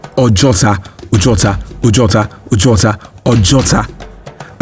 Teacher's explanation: So they just say the place where they shoot, or the shooting range, or to simply put, the spot where bullets are shot, Ojuota. And so it later evolved from Ojuota to a gradual fading away of the other O before the Ota. So in Yoruba language, there is a formula where two vowels sit side by side in one word, only one is pronounced, while the other serves as an invincible stress or an emphasis in the word.